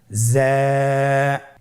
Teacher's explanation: জিহ্বার আগা সামনের নিচের 2 দাঁতের পেট ও আগার সঙ্গে লাগিয়ে উচ্চারিত হয়